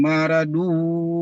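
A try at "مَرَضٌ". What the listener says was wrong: Maro, tebal. Rohnya tebal.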